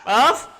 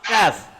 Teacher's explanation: Qaf betul-betul di pangkal. Kaf naik sikit saja.